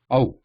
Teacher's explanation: We are not dwelling or staying on that ah sound for a long time.